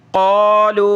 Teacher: قالوا، یہ مد ہے، قاف کو موٹا کریں